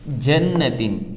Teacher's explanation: 1 الف کے برابر کھینچ کر ناک میں گنہ ہو کر پڑھا جائے گا